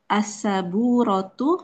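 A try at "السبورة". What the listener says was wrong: As-sabburotu, baknya ada tasydidnya.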